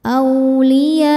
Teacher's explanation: Maka ya-nya dipanjangkan, boleh 4 boleh 5 harokat. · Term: mad wajib muttasil